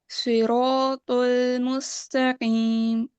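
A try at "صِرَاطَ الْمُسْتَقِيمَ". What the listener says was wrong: No, still the lam is heavy, okay. وہ جو ایک ہمارا لام میں ایک انگلش ایکسنٹ ہوتا ہے نا, وہ نہیں لانا آپ نے. طل مستقیم.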